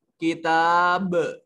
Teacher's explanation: تا کے اوپر الف المدیہ الصغیرہ, کتاب با کو بریک نہیں پڑھیں گے. یہاں با کے اوپر آواز جو ہے وہ اپنے مخرج پر لگ کر ٹکرا کر واپس آنی چاہیے. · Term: قلقلہ